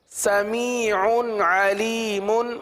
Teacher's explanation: کیونکہ تنوین کے بعد عین، عین حروف حلقی میں سے، لہٰذا اظہار کا قاعدہ ہوگا